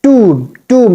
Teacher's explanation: We don't have to make the sound of B. It should be silent here. And we have to stretch the sound of O.